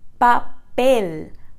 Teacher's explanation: Então, esse sonzinho no final você não precisa soltar, mas isso pode te ajudar a ir desenvolvendo cada vez melhor essa forma de pronunciar o L mais exagerado, mais prolongado, com a pontinha da sua língua encostando lá no céu da sua boca